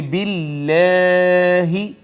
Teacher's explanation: باللہ ناظرین یہاں پہ اگر آپ توجہ فرمائیں تو اس میں جلالت اور اس میں جلالت کا ماقبل ہے مکسور یعنی زیر آئی ہے، تو اس میں جلالت کا ماقبل اگر مکسور ہو تو ہم نے کئی دفعہ پڑھا کہ اس کو ہم باریک کر کے مرقق کر کے پڑھیں گے اور یوں پڑھیں گے باللہ۔